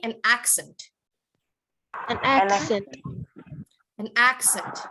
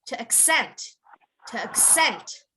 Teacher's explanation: when you say the noun you want to emphasize the first part of the word · But one of them is a noun, the other is a verb. If it's a noun, then you have to emphasize the beginning, accent.